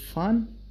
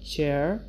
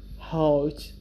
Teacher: these sounds are called voiceless there is no vibration